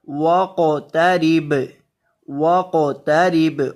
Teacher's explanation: قاف کو بھی اور با کو بھی ان دونوں حروف کو ہلا کر پڑھیں گے